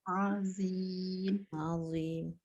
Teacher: Dia macam keluar lidah tu, tapi cara mengeluarkan lidah tu jangan banyak sangat, sikit je. Yang penting angkat lidah belakang supaya dia tebal. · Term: Zo